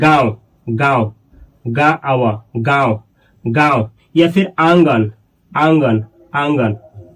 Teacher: ऐसा वर्ण जिसके उच्चारण में नाक नाक और मुंह दोनों आता है। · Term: अनुनासिक